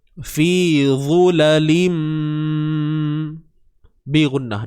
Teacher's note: Idgham bi gunnah. Tanwin bertemu mim.